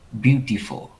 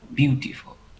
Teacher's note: Ví dụ cái này sẽ là beautiful. Quan trọng âm là beau.